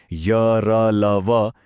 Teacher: य, र, ल, व, ये सब अल्पप्राण और सघोष हैं।